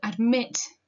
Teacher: it's got the unstressed syllable first ad and then the stressed syllable MIT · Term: metrical foot